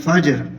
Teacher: فجر، یہ را جو ہے یہ باریک ہوگی کیونکہ را سے آ کے نیچے زیر ہے، اور یہ جیم ہے، یہاں قلقلہ ہوگا، تھوڑی سی جیم کو ہلا کے پڑھنا ہے